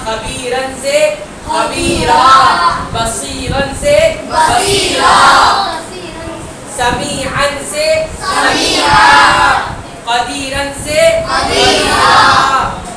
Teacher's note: زبر کی تنوین پر اگر رکنا ہے, وقف کرنا ہے, تو ایک زبر الف مدہ بن جائے گا. جیسے بتایا, خبیرن سے خبیرا, بصیرن سے بصیرا, سمیعن سے سمیعا, قدیرن سے قدیرا.